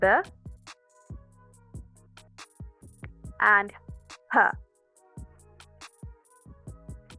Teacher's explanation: आपको अपने दोनों लिप्स के थ्रू एयर को ब्लॉक करना है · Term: bilabial plosives